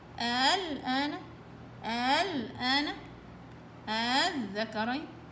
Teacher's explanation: يا اما التسهيل، تسهيل همزة الوصل يعني الثاني، الهمزة الثانية، الهمزة الاولى زي ما هي ما بتتحركش زي ما هي، همزة الوصل بين الهمزة والألف مع عدم المد مطلقا